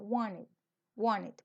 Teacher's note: ellos hay veces se tragan la t o la omiten